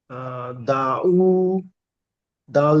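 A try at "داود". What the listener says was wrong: দেখেন, এখানে দাকেও একালিপ টান দিতে হবে, প্রথম দাটা। কারণ কি বলেন তো? হ্যাঁ, মাশাআল্লাহ, প্রথমটা আলিফ মাদ্দা আছে, আলিফের ডান দিকে জাবার রয়েছে, এই যে, এটাকে আলিফ মাদ্দা বলা হবে। আলিফ মাদ্দাকেও একালিপ টান দিতে হবে। জি না, আলিফের ডান দিকে জাবার আছে।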